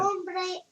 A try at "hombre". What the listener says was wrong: no, you don't say hombre. Hombre. You skip the H.